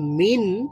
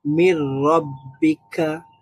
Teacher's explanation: من ربك এখানেও আমাদের নুন সুকুনের পরে র ছিল একটা, তো র হচ্ছে ইদগামের হরফ, এই জন্য আমরা মিন না বলে বললাম মির রব্বিক, মানে ন সাউন্ডটাকে আমরা র তে কনভার্ট করে ফেললাম, র এর সাথে মিলিয়ে ফেললাম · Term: ঈদগাম